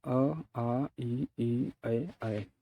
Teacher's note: अवृत्ताकार स्वर इन स्वरों के उच्चारण में ओठ गोल नहीं होते हैं